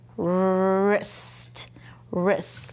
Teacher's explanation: there's a W R, but it only says, ruh. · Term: silent letter